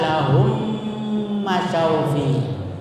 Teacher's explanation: Artinya dimasukkan mim ke dalam mim sehingga menjadi satu dengan memakai tasdid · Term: idgham mimi